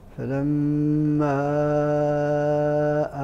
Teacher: الميم المشدده فيها فغنه الغنه